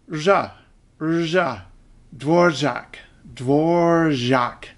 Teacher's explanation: if you're an ordinary English speaker and you don't want to go around saying r, r, r, r, r, just say r plus j.